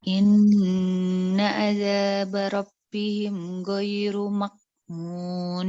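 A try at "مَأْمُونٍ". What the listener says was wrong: Duh, kok berubah? Itu ke arah kof itu kayaknya. Mak. Nah, dalam sini ya, hamzah itu paling bawah. Ma'mun. Kalau ain ma. Kalau kof mako di sini. Ini ma.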